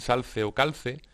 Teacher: conservación de la L implosiva en salce o calce